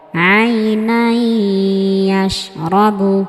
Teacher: عينا يشرب আই নাই ইয়াশ রবু। عينا يشرب এখানে তানবিনের পরে ইয়া আসার কারণে তানবিনকে গুন্নাহ সহ মিলিয়ে পড়েছি। আইনা ইয়াশরাবু। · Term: ইদগামে বা গুন্নাহ